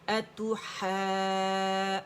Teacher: आवाज़ ऊपर जाएगी, अलिफ खींच रहे, अतु है करके नहीं पढ़ना, इमाला नहीं करना, ठीक है। अतु है जूनी, नी 2 काउंट्स।